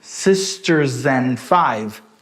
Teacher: S é um som de consoante. Aqui a gente começa com um som de vogal. Consoante com vogal, juntou, chama linking sound.